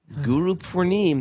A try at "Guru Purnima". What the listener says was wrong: Guru Purnima. Purnima. Someone yeah, it's a long A on the end there. Ma.